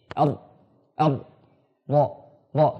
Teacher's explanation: Itikrar itu adalah getaran yang berulang-ulang. Nah, jadi ra ini huruf yang bagaimanapun keadaannya dia mesti bergetar, tidak boleh dia saklek begitu.